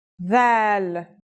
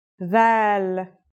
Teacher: This letter's pronunciation is a voiced sound, the, as in this or that. It's pronounced with the tongue between the upper and the lower teeth.